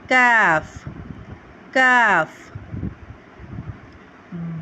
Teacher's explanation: जुबान की जड़ और तालू के सखत हिस्से से हम अदा करते हैं